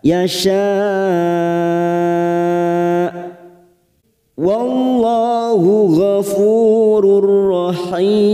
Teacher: Wallah lam jalalah yang didahului fathah kita baca tafkim.